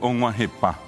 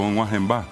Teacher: Y notablemente, amá es lluvia, tiene una M, la M nasaliza la palabra